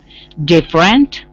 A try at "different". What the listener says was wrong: Close. That middle E is silent, really. So different.